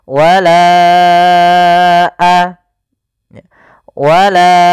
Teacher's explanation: Maka kita panjangkan huruf la-nya sepanjang 4 harokat atau 5 harokat. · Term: mad jaiz munfasil